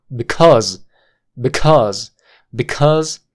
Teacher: la forma débil la vamos a reducir por una a corta o sha muy muy cortita